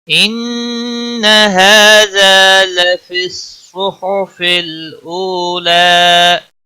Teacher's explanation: نون مشدد پر گنہ ہوگا